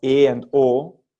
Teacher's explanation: They're the same with respect to frontness or backness as E and U, but the tongue goes lower. So moving from U to O, your tongue just drops.